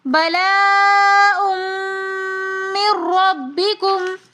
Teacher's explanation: नून साकिन के बाद रा आ रहा है, तो यहाँ पर इदगाम बिला गुन्ना का कायदा हो रहा है, तो इसलिए हम यहाँ पर गुन्ना नहीं करेंगे, पढ़ेंगे बलाउम मिर रब्बिकुम।